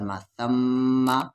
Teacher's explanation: یہاں میم پر تشدید ہے تو غنہ ہوگا